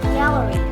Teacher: Gallery has 3 syllables and the stress on the first syllable. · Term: primary stress, primary stressing